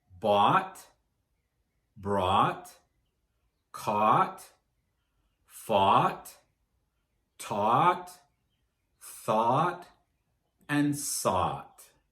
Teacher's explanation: Just remember that when you're pronouncing these past and past participle forms of these verbs, that the sound in the middle is ah, like in hot water